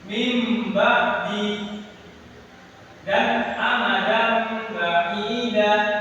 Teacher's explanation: Jadi huruf iqlab ini dibaca dengung dan kemasukan mim.